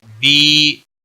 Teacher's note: بی مد منفصل ہے، 3 الف کے برابر کھینچ کر پڑھیں گے